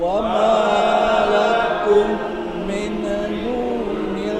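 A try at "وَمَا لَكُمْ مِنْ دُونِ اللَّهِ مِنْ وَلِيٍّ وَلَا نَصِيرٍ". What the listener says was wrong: Diulang sekali lagi, masih ada yang membacanya terburu-buru. Wa ma lakum min, itu dia. Wa ma lakum min dunillahi min waliyyin wala.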